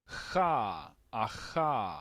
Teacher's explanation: es un sonido que se gesticula en la parte eh velar